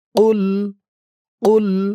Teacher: কফের আওয়াজটা গলার ভিতর থেকে একটু ধাক্কা দিয়ে বের হবে